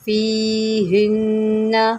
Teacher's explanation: فیہن، نون مشدد ہے، گنہ کریں